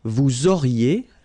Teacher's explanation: liaison here, and then EZ will go like E.